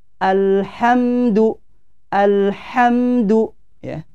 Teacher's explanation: lam bersukun di sini tidak boleh dipantulkan karena dia bukan huruf Qalqalah